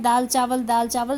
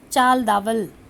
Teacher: किसी शब्द में दो ध्वनियों का एक दूसरे के स्थान पर चले जाना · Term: आद्य शब्दांश विपर्य